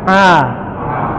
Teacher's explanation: nggak boleh ada getaran dihidungnya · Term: huruf Ain